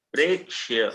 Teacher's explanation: प्रेक हल्का सा क पर रुकेंगे और आगे स तत्काल बोलेंगे।